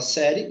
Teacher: O I, minha gente, ele é considerado a semivogal e o E a vogal. Olha lá, esse ditongo da ordem que começa primeiro a semi, depois a vogal, é um ditongo crescente.